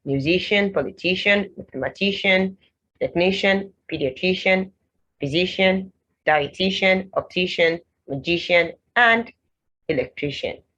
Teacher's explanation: So you don't have the k and sh for the CIAN. The C only has one sound there, and that sound is sh.